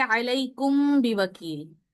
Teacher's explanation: मीम साकिन के बाद जब बा आ जाए तो उसमें इख्फा होगा। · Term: मीम का इख्फा